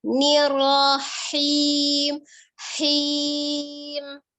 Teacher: itu bukan huruf kho, tapi huruf ha dari tenggorokan tengah